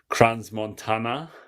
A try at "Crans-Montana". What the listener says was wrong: The S is silent, brother. Crans-Montana.